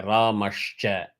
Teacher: Ramaha plus Cha, Ramashcha. Here you see the Visarga getting substituted by Ish.